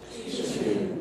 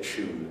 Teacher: Palatalization, addition of front tongue raising, that's y-like, and this you'll hear in the traditional pronunciation of the word tune.